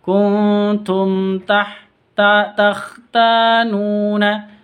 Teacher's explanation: Kuntum takhtanuna. Mim bertemu dengan ta, jelas bacanya karena izhar safawi.